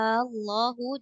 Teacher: yang namanya enam harakat itu adalah isyba cara bacanya tadi Allahu dipanjangkan dulu enam harakat madnya kemudian dimasukkan ke dalam tasdid